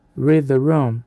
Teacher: Note o som do e a longo e tenso em read. O segredo está no linking sound entre o d de read e o th de the. · A língua deve deslizar rapidamente dos dentes superiores para a posição interdental. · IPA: /riːd-ðə/